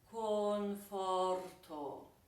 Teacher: the first O is closed, the second O is open, the third O is closed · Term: closed O